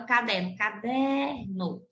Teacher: a penúltima sílaba é a sílaba mais forte dessa palavra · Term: paroxítonas